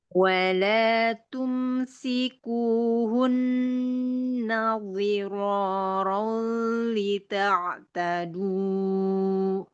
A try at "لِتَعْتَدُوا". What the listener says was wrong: Jangan panjang kepanjangan. Dita'tadu.